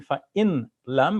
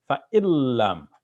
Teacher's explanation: So you hear the L sound in yarmalun. So that L sound, when it follows the N sound, makes it such that we have to assimilate the two